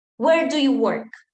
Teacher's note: it's a falling intonation it's not where do you work okay where do you work